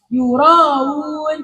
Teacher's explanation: Nah, berhubung kalau yang yuraun ini hamzahnya asalnya di dhamma, maka tasdidnya ini bukan antara hamzah dan alif, melainkan antara hamzah dan wawu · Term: tasil